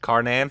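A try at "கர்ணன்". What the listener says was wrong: Or you need glasses because that M is not an R and an N. It's K-A-M-A-N. It looks like an R and an N. Or do I need to put my glasses on?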